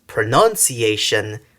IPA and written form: pʰrənʌnsiˈeɪʃən (pronunciation)